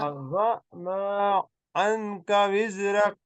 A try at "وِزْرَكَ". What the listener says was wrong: وز، زا کو تیز پڑھیے، وز رک،